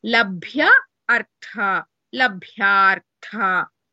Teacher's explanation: Labhyartha bha mahaprana and tha also mahaprana.